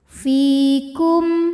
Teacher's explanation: alaikum ID ja'ala fi fi hukumnya adalah Mad Thobi'i dahohiri sebab ada ya sukun yang sebelumnya berbaris kasrah maka huruf Fa panjang dua harakat